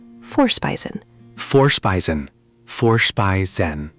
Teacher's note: The V in German sounds like an English F, so it's for, not vor with a V sound. And the I makes an I sound.